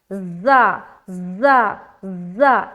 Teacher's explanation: जा में सीटी वाली सिफत पाई जाती है, ठीक है। हर्फ सफ़ीर के अंदर आता है जा, और सख्ती के साथ भी अदा होगा, जा जा जा, इस तरीके से।